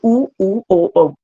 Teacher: तो देखिए इसमें जो है जो वृत्तमुखी है उच्चारण किस में ओष्ठ के हो जाएंगे। ओष्ठ मतलब जो हमारे ओंठ है वो कैसे हो जाते हैं, गोल हो जाते हैं।